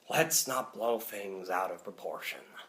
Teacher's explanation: things like let's not blow things out of proportion and there you're using quite a difficult dark sounding voice with a little bit of that deepness in the back of your throat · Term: dark raspy sounding voice